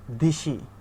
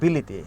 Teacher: একটা স্বরধ্বনির প্রভাবে আরেকটা স্বরধ্বনির পরিবর্তন হয়ে যাচ্ছে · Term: স্বরসঙ্গতি